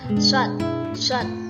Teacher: Shad memiliki sifat hamas, rokhawah, dan syafir, yang artinya mendesis, nyerwit, dan suara tidak tertahan.